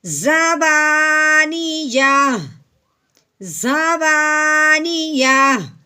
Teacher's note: آخر والے حرف کو ساکن کرنا ہے، تو لیکن ہم نے کیا کرنا ہے کہ جب گول تا ہوتی ہے تو اس کی کیا بات تھی کہ گول تا میں تا کو ہٹا دینا ہے، تو پیچھے ہا کو ساکن کرنا ہے، صرف ہا کی آواز نکالنی ہے